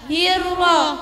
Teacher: ro tasydid dibaca dengan getaran yang halus tidak terlalu polos